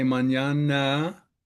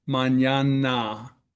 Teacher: gringos have an accent problem because of unaccented A's, we tend to schwa, like the word mañana.